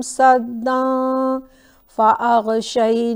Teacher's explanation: تنوین کے بعد فا، اس کو ہم تھوڑا نیزل کر کے پڑھیں گے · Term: اخفا